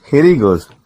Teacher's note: Hereயும் heயும் merge பண்ணி join பண்ணி link பண்ணி சொல்றாரு